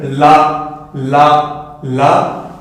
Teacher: vous allez utiliser du coup l'avant de votre langue, mais également un petit peu les côtés de votre langue